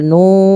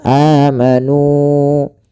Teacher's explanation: nu kita panjangkan dua harakat dan alifnya itu dianggap tidak ada. Jadi tidak boleh kita lebihkan misalkan amanu. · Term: mad thabi'i